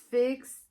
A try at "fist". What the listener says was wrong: Fist. You said fix.